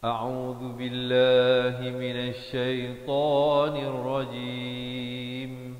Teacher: hamzah di pangkal kerongkong, ain di pertengahan kerongkong, zal di hujung lidah